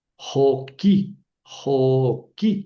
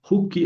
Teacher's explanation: al añadirle la I final, esta O larga se acorta en U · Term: U breve